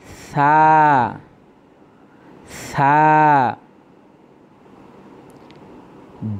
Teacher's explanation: সা, সা খুব পাতলাভাবে উচ্চারণ করতে হবে। জিহ্বার আগা সামনের উপরের 2 দাঁতের আগার সঙ্গে লাগাইয়া সা, সা। জিম, 3 আলিফ টানতে হবে।